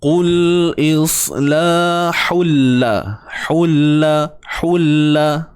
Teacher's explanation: tanwin bertemu dengan lam, idgham bila gunnah. Masukkan tanpa dengung. Okey, masukkan tapi jangan dengung, tak perlu dengung.